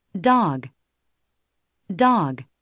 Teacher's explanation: 입술을 오픈 라운딩을 시켜주고 혀를 뒤로 당겨 위로 올려주는 것을 소리로 느껴보시기 바랍니다. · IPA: [o]